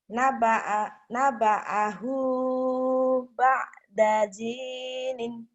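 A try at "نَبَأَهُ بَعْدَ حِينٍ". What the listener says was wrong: Nggak ada titiknya. Hinin.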